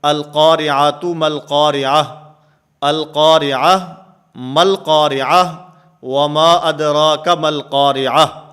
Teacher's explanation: یہ گول تا ہے، تائے مدورہ، اور وقف کی حالت میں یہ ہا سے بدل جاتی ہے، اور اس وقف کو وقف بالابدال کہتے ہیں۔